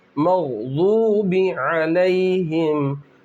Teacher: मग़ गैन को पुर पढ़ेंगे, ऐसी ज़ाद को पुर पढ़ेंगे, साथ ही साथ वाव में मद्दा होगा, वाव को एक अलिफ के बराबर खींचेंगे।